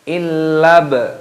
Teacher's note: Lamnya di sini, lam alifnya dibaca tasdid, dimasukkan. Illa baknya berharokat sukun, diqalqalah, dipantulkan suaranya